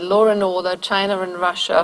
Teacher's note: And this is a very, very general phenomenon, and it has spilled over into cases where there is actually no underlying R in the orthography, but we still have sort of a final vowel and then an initial vowel, and a R intrudes. It just pops up basically out of nowhere.